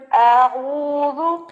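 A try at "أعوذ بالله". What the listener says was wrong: ابھی بھی تھوڑا لمبا ہے، ابھی بھی تھوڑا لمبا ہے۔ جی اعوذ باللہ۔ جی شاباش۔ اور بھی جتنے اسٹوڈنٹس ہیں وہ ذرا اعوذ باللہ میں حمزہ کو لمبا نہ کیا کریں، ٹھیک ہے؟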